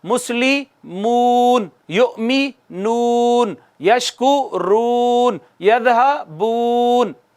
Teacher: होंठ गोल करके 1 अलिफ जितना खींच रहे थे ना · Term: वाव मद्दा